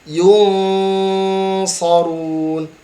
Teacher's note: Dengungkan di huruf nun, dia dibaca samar, ya, ikhfa.